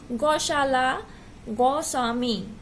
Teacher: लिखते ओ है लेकिन बोलते हैं औ।